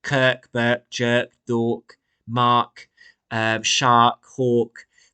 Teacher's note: They've all got that plosive K sound